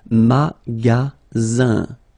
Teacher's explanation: the ending here is IN, so it's nasal, goes in your nose, and it's un.